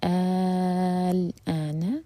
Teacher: جب ہم پہلا حمزہ کھینچیں گے اس کے بعد ہے سکون، تو یہ ہے مد لازم کلمی مخفف ، کیونکہ یہاں پر نا شدہ نہیں ہے تو مثقل نہیں